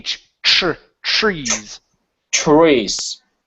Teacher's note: instead of a tr, give me a ch. · the tr, don't pronounce a tr, pronounce a chr